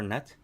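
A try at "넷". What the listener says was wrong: You don't say net like with a strong T. You just want to like let it like the T teeter off a little bit.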